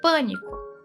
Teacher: proparoxítonas, sílaba tônica na antepenúltima posição